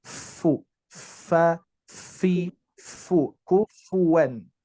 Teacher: bibir bawah bagian tengah menempel ke gigi seri atas